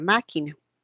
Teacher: una M es nasal un sonido k de casa es oclusivo y una n es nasal